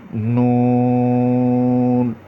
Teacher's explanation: نون کا مخرج جب زبان کا کنارہ ثنایا، رباعی اور انیاب سے لگے تو یہ حرف ادا ہوتا ہے